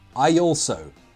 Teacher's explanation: Between those two words, a y sound will intrude. Why? Because I ends in an e sound.